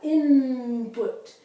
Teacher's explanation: it takes on the m sound but it does not change in writing · it remains an in in writing but to make the pronunciation smoother it takes on the m itself